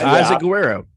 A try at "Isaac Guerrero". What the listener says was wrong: No, you definitely had that one wrong. Isaac Guerrero. there's an N. There's an N in there.